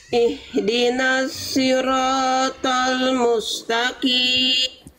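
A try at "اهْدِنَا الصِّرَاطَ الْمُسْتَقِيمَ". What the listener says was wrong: Oke, sekarang kita latih huruf sod bunda masih kurang tebal. Angkat pangkal lidahnya bunda. Ya, jadi pangkal lidah itu lidah bagian terdalam bunda didorong ke arah dalam. Sli. Sli, dorong ke dalam lidahnya. Sli. Kayak mau nelan sesuatu. Sli.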